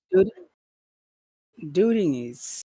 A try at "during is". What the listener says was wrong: Yeah, you can start a little bit higher.